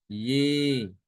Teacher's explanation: Itu namanya imalah gitu. Ya tidak dibaca dengan fathah tapi juga tidak dibaca dengan kasroh